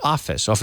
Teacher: when you have two F's there's no action in the vocal chords